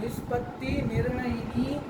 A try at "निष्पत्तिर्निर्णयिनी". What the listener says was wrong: निष्पत्तिर कहाँ है? और करणादि कहाँ है? करण है, कर्ण नहीं है। करण है।